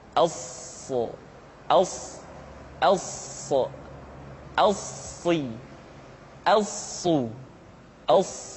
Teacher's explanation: Untuk memudahkan pengucapan huruf so, Perhatikan sifat as-safir yang dimiliki oleh huruf sha, yaitu suara tambahan yang terdengar menyerupai dengan suara angsa